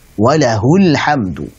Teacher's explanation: Setelah hak dhamir ada sukun sehingga dibaca pendek